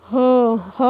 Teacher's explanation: ह जब हम बोल रहे हैं तो अंदर से जो हमारी तीव्र वेग से जो श्वास निकल के आ रही है तो वो बीच वहाँ पे घर्षण कर रही है। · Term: काकल व्यंजन